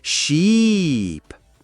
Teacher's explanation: When saying sheep, smile a bit more and stretch the sound. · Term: long E sound